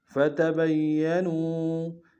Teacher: واو مدہ ہے آخر میں ایک انتہا میں کھینچیں گے